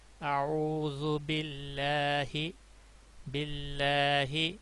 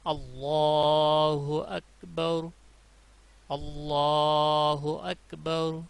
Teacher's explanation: جب پچھلے حرف کے نیچے زیر ہو تو باریک پڑھا جاتا ہے، اعوذ باللہ، باللہ باریک پڑھا جائے گا، اور جب زبر ہو تو اس صورت میں پر ہوگا، یعنی موٹی آواز میں پڑھا جائے گا